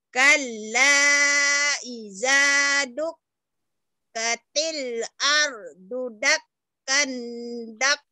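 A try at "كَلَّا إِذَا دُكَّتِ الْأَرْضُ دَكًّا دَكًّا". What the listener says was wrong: Dakang, jangan jadi dakang, jangan dakan. Ikhfa. Kalla idza dukkatil ardu dakka dakka.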